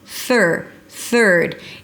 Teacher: Bring the tongue up for the TH and pull it in immediately for the R. There is no vowel in the middle.